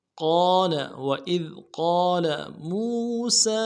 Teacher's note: میم کو واو کے ساتھ ملانا ہے، واو مدہ ایک الف دال میں کھینچیں گے